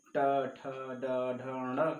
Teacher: जब जीवा ऊपर स्पर्श कर रही है तो वह सारे वर्ण मुर्दा हो जाते हैं